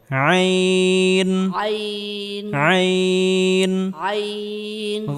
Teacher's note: আইন হরফটি গলার ভিতরে হালকা চাপ দিয়ে উচ্চারণ করতে হবে।